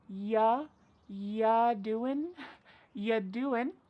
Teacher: we're going to start this question with just you, which is reduced to y. · We're dropping that g again.